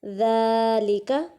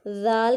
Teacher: ذال کو نرمی سے ادا کریں گے اور ایک الف کے برابر کھینچیں گے